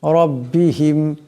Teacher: র উপর জবর আছে আওয়াজটা মোটা করে পড়তে হবে